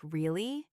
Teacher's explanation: when you ask a question like really, your voice goes up. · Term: rise